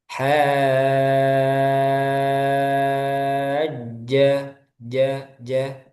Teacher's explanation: di jim itu nanti dikurangi ee nafasnya atau udaranya